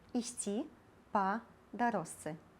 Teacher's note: Шыпячы «ж» прыпадабняецца да свісцячага «ц» і ператвараецца ў «с»